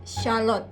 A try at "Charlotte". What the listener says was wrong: No, not lot. Charlotte.